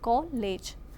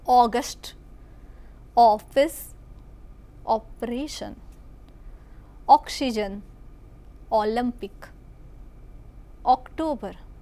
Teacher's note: કોલેજ, કો પહોળો ઉચ્ચાર કરીએ છીએ